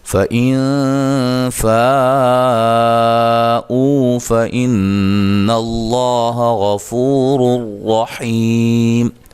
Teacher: ٹھیک ہے، باریک اخفا ہوگا، فَإِن فَاءُوا فَإِنَّ اللَّهَ غَفُورٌ رَحِيمٌ نون مشدد پہ غنہ ضروری ہے ، لفظ اللہ کو موٹا ادا کریں گے، اس سے پہلے